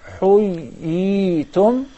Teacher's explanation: there are two ya's, and that will be accomplished through prolonging the first ya to harak. حُيِّيْتُمْ.